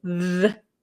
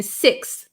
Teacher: So it makes, there's 2 types of TH sounds, right? The TH that makes a sound, like a vocalized sound, the. And then there's a like kind of a breathy TH, like in sixth.